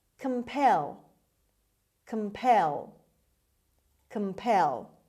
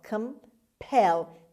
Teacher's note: C-O-M, as usual, is pronounced as schwa. Compel. The stress is on the second syllable. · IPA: /kəmˈpel/